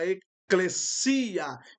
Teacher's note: a sílaba tônica fica no final da palavra